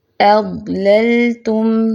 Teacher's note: ضاد پہ جماؤ بھی ہے اور تھوڑی سی آواز چلے گی